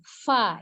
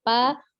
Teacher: Fa-nya seperti meniup. Fa, ya, tidak pa.